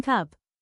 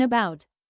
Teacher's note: central vowels, where the tongue is positioned in the middle of the mouth.